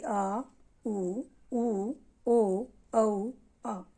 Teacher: जिनके उच्चारण में जीभ का पिछला भाग काम करता है उन्हें कहते हैं पश्च स्वर